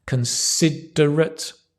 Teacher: considerate, stress the ser